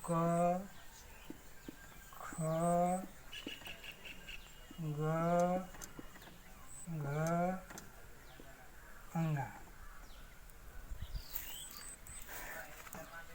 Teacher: क वर्ग का उच्चारण स्थान कंठ। कंठ में जो है क, ख, ग, घ, अंगा।